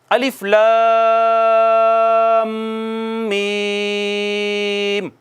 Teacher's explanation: یہ جو بڑی مد ہوتی ہے نا، بڑی مد، اس کو 4 سے 5 الف کھینچتے ہیں